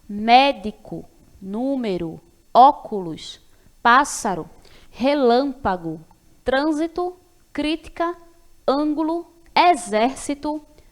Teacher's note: as palavras proparoxítonas que é quando a sílaba tônica é a antepenúltima